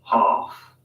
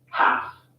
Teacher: Ah in UK English normally becomes an a sound in American English.